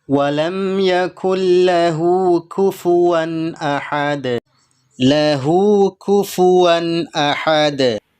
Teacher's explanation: hunya kita baca panjang dua harakat dengan cara diayun